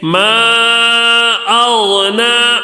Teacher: مد منفصل ہوگا، مد منفصل ہوگا۔ مقدار کتنا کھینچنا ہے؟ 3 الف 4 الف تک کھینچ کر پڑھنا ہے